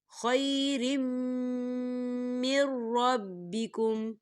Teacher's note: دیکھیں یہاں را کے نیچے تنوین ہے اور تنوین کے بعد میم مشدد آ رہا ہے، اور میم جو ہے حروف یرملون میں سے ہے تو یہاں بھی ادغام ہوگا۔ ہم تنوین کو میم کے اندر مدغم کریں گے۔